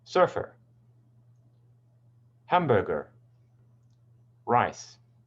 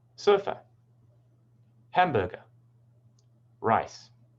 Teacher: Americans usually pronounce the R phoneme more.